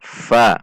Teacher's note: bertemunya Ujung bawah gigi seri atas dengan bibir bawah bagian dalam